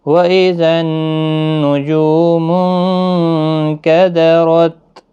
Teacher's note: نون ساکن کے بعد حروف اخفا کا کاف ہے، اخفا حقیقی ہوگا، غنہ کے ساتھ پڑھیں گے، را زبر کی وجہ سے پر ہوگا اور یہاں پر بھی تا ساکن ہی رہے گا وقف کی صورت میں۔